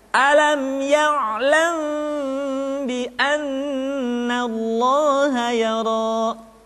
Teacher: kita baca mim dengan suara yang samar. Caranya, kedua bibir kita direnggangkan, tidak sampai rapat secara sempurna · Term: ikhfa syafawi